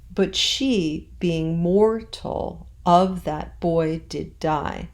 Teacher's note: being i pronounced as one syllable